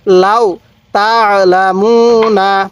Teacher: এই আইনটা গলার মধ্যে চাপ দিলে আইনটা সহি উচ্চারণ হবে